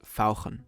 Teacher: German has the special ach sound, which sounds very throaty.